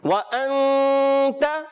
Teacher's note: نون ساکن کے بعد تا حروف اخفا میں سے غنہ کریں گے.